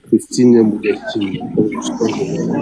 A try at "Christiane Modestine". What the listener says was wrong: C'est pas Christine, hein, c'est Christiane Modestine. Christiane Christiane Modestine.